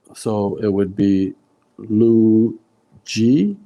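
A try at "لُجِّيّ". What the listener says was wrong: Ludji. You join it.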